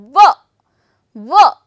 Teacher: your lower lip and your upper teeth is joining together to form up this word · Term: Dental V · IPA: /v/